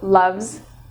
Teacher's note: love ends in a V sound, so loves, it has a Z sound